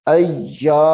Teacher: یا زبر ای، حمزہ یا زبر ای، یا الف زبر یا، ای یا کو ذرا تھوڑا سخت کر کے کیونکہ یا مشدد ہے